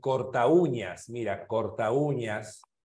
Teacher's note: La U. Es decir, la U tiene mayor fuerza de voz y está al costado de una A. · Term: hiato acentual